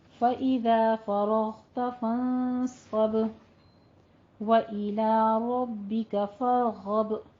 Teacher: غب میں غین کو ادنی حلق سے پر ادا کرتے ہوئے با کے اوپر قلقلہ کرنا ہے